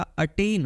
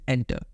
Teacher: ये aspirated sound है, यहाँ पे आपको पफ ऑफ एयर फील होगा